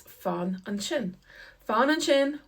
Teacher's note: the S is pronounced like an SH, and that's because it comes beside an I. So when the S comes beside an I or an E, we'd say it's slender, queel, and it gets an SH sound instead of an S.